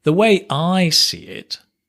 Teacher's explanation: The way I see it, emphasis on the I, right?